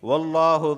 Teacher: لفظ اللہ سے پہلے زبر آیا ہے اس وجہ سے میں لفظ اللہ کو موٹا پڑھ رہا ہوں